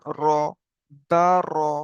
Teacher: আপনি যখন রটা উচ্চারণ করছেন তখন আপনার মুখটা অটোমেটিক গোল হয়ে যাবে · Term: পুর